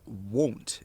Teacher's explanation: the w and the o share similar qualities called roundness